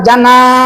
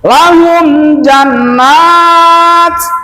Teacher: Awas, kalau ada nun musyadah dan juga ada alif berarti panjangnya harus dua. N-nya dipanjangkan, nanya juga dipanjangkan.